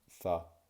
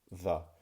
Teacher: So when I say th or the, you can see how my tongue comes out and I go th or the. And the difference between a th sound and a the sound is based on voicing.